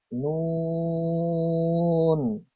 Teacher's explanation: 9 number মাখরাজ, জিহ্বার আগা তার বরাবর উপরে তালুর সঙ্গে লাগিয়ে উচ্চারিত হয়